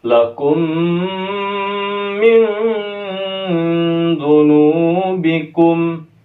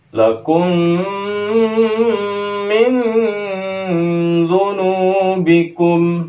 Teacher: Kemudian sini ikhfa, ikhfanya bukan ikhfa ab'ad tapi ikhfa awsat. Maka di pertengahan.